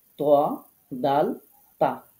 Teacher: জিহবার আগাটা সামনের উপরের দুই দাঁতের গোড়ার সাথে লাগিয়ে উচ্চারিত হবে তিনটি হরফ